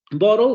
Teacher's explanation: vamos a tener ese fonema vibrante simple y luego vamos a tener el lateral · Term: núcleo silábico